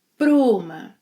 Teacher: also links para and uma, pruma.